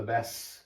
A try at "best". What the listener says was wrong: She don't pronounce the T, so it's best.